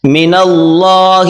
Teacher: اللہ کی لام کو موٹا کر کے پڑھیں